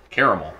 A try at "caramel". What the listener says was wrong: There's another A. What are you doing with it?